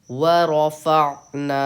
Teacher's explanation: فعنا میں عین پہ قلقلہ نہیں کرنا ہے